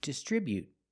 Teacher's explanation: With the T at the end, after the vowel, you can make a stop T sound.